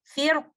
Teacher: In case of stopping, you will say firq. Only one option, which is to make letter ra heavy.